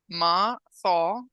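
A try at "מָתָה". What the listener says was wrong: Mata. There's a dot in the tav, so it's going to be a T like turtle. Mata.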